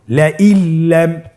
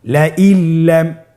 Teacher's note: নুন সাকিনকে আমাদেরকে পরবর্তী হরফের সাথে মিলিয়ে গুণা ছাড়া পড়তে হবে।